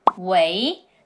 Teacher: Well, this character is actually the falling tone, Wei. But when picking up a film, we say, Wei, the rising tone, Wei.